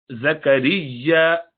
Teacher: زا پہ شدت ہونی چاہیے صفیر وصل کے ساتھ, اور یا پہ ذرا شدت کے ساتھ نکالے کیونکہ 2 یا ہے.